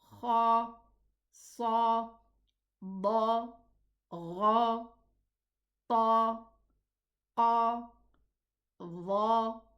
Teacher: when we pronounce these letters, the sound fills the mouth. The sound direction tends to go upwards, filling the whole of the mouth. So we say ha, sa, da, gha, ta, qa, dha. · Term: elevated